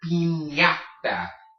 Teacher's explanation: The ñ is basically as if in English you were to take an N and then put a Y after it. It makes a ñ sound.